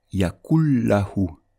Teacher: Donc la règle d'assimilation c'est lorsque l'on va lire les 2 mots ensemble, le noun va disparaître, il ne va pas être prononcé et le lam il va prendre un shadda. Et on lira yakullahu.